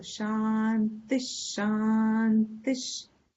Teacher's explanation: the visarga is replaced by half sh